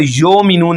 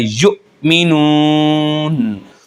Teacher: अक्सर और बेशतर लोग यो मिनून पढ़ते हैं, यो मिनून गलत है। हमज़ा साकिन हो तो झटके के साथ पढ़ा जाता है यु मिनून। वाव साकिन से पहले पेश आ गया तो वाव मद्दा है।